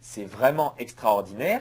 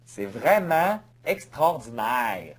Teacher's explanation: Les Québécois laissent souvent traîner les sons voyelles.